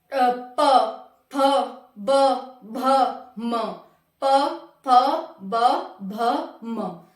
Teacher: इसमें कंठ और ओष्ठ, कंठ और ओष्ठ अंदर से ये आवाज आएगी और हमारे होठ भी बजेंगे, होठ भी एक दूसरे से टच होंगे। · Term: प वर्ग